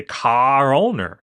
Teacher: they put the r back so they say car owner actually and the r comes back